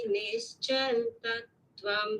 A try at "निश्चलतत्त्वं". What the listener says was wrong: Not nischal, nischala. Satsangatve nissangatvam nissangatve nirmohatvam nirmohatve निश्चलतत्त्वं निश्चलतत्त्वे जीवन्मुक्तिः.